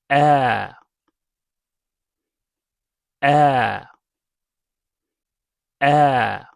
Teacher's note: Al if's main sound is the long vowel a just like the long a in the English word father.